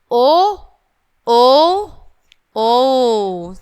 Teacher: मतलब तीन गुना समय लगाना है। जितना हम ओ को बोलने में टाइम लगाते हैं उससे थोड़ा और एक्स्ट्रा टाइम लगाएंगे। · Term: प्लुत स्वर